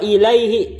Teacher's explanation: Atau wa ilaihi, ilaihi itu sebelum hi tersebut adalah ya sukun, maka tidak dibaca mad